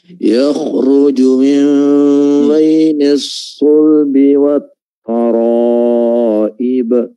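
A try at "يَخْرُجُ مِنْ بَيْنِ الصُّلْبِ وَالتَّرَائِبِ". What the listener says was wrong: Ta-nya jangan terpengaruh kedengaran seperti tebal tak karena tebalnya huruf ro setelahnya. Ta-nya biasa saja tartik. Taro, nanti tebal ketika di huruf ro.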